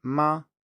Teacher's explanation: We have the first tone, which is a high tone, that would be ma.